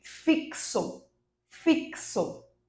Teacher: Porque nesse caso X, ele tem o som do KS, é o que a gente chama de dífono.